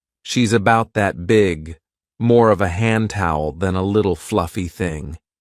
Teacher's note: omits the verb is completely and just says she about rather than she's about.